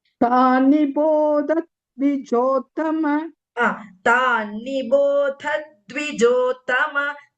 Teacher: That Adha is a Mahaprana plus the Ditvam. Both should be heard.